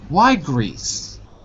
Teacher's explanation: You fall down at the end of the question